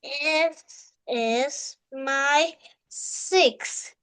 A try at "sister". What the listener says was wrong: Okay, again, let's say sis, not six. Sis. Sis. S. Sis. Not six. Sis. Sis. Sister. Not six, okay. Six is different with sis. Okay, again, let's say sister.